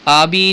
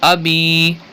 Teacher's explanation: इसी तरीके से अभी आबी बाज इसको पढ़ जाते हैं, हमज़ा को खींच लेते हैं। तो यहाँ पर आबी नहीं करेंगे बल्कि अभी हमज़ा को बगैर खींचे पढ़ेंगे